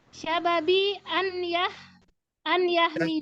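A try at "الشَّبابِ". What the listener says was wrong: Syababi, banyak panjang. Syababi.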